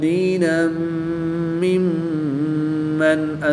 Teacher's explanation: دو زبر کی تنوین کے بعد میم حروف یرملون میں سے ہے تو یہاں پر ادغام مع الغنہ ہوگا، غنہ کر کے پڑھیں گے۔